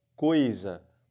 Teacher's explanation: você percebe que a palavra fica igualzinho tapando ou não o nariz porque porque não sai som pelo nariz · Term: ditongo oral